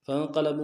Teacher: فا کو نون کے ساتھ ملانا ہے، نون ساکن غنہ کریں گے، قوف کو موٹا ادا کریں گے، لام کو لم سے ادا کریں گے، با کو واو کے ساتھ ملانا ہے، حروف مدہ میں سے ہے واو مدہ، ایک الف دال میں کھینچیں گے۔